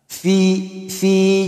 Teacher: ang fa dito na kasra, kanyang vowel ay kasra, ay may tinatawag na mad. So, dapat patagalin mo siya ng dalawang haraka.